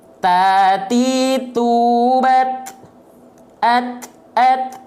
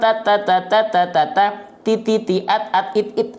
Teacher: melafalkan huruf ta itu masih kekeliruannya seperti ini dengan cara menjulurkan ujung lidah keluar mulut